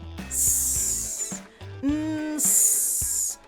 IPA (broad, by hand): s